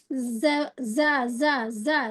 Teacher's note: زا ہم سمجھ گئے نا، اس میں سیٹی آ رہی